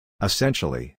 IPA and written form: ɪˈsenʃəli (essentially)